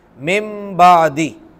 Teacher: اقلاب کا معنی ہوتا ہے بدلنا، یعنی نون ساکن اور تنوین کے بعد اگر با آ جائے گی تو ہم اسے میم سے بدل کر پڑھیں گے